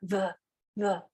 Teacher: notice that the breath is coming but also their throat is vibrating